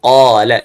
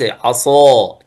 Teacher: قال الإطباق أقوى أي أن حروف الإطباق هي جزء من حروف الاستعلاء لكن فيها صفة الإطباق فحروف الإطباق أقوى من غيرها نحو عصا أو عصاه أقوى تفخيما من قال لأن قال ليس فيها إطباق